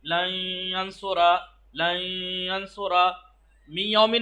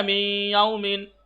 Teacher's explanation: इदगाम गुन्ना यानी नाक की फिजा से खींच के अदा किया जाएगा। एक तो नाक की फिजा से अदा करना है मी, और थोड़ा खींचना है, ऐसे नहीं करना है लन यंसुरा नहीं, लन यंसुरा मी यौमिन नहीं कहना, मी याउमिन।